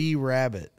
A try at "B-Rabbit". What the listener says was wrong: There was a weird emphasis on B.